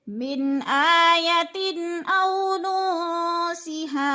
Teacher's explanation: من آیت، من پہ اظہار ہو رہا ہے کیونکہ نون ساکن کے بعد حمزہ حروف ہلکی میں سے آ گیا ہے تو ادھر اظہار ہوگا، اخفا نہیں کریں گے، یعنی ظاہر کر کے لفظ کو پڑھیں گے۔